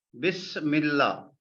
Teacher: Mim we pronounce with lam. This alif of Allah, we don't pronounce. This is hamzatul wasl.